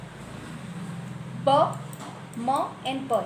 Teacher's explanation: जैसे अभी मैंने आपको बताया एग्जाम्पल हो गया ब, म एंड प, ये वर्ड बोल के देखिए आप, दोनों लिप्स क्या होंगे मैच होंगे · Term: लेबियल्स